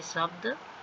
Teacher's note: जो तालव्य श है वो तालु के मध्य भाग से बोला जाता है, यह मध्य और नर्म ध्वनि होती है